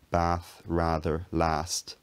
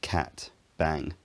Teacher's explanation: words like bath, rather, last, taking a longer and slightly lower vowel than words like cat and bang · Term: trap-bath split